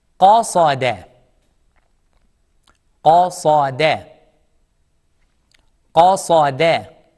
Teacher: Qaf is heavy. Sad is heavy, thick. And dal is soft. Smile. Smile on dal.